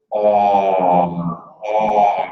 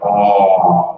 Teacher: the short back o so we're doing like a u- shape here